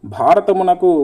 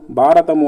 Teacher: మహాప్రాణానికి అల్ప ప్రాణం చదవడం అని చెప్పుకోవచ్చు భ అనేటువంటిది ఈ భ అనేటువంటిది మనకు మహాప్రాణం అవుతుంది ఈ భ అనేటువంటిది